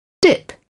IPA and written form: dɪp (dip)